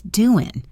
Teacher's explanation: This is a common informal spelling and pronunciation of doing, where the final G sound is dropped.